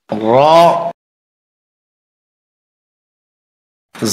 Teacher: র হরফটি জিহ্বার আগার পিঠ উপরের তালুতে লাগবে, মোটা হবে, বাংলা আকার প্রকাশ পাবে না।